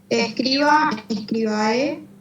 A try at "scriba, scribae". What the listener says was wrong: Bien. Acorde el acento.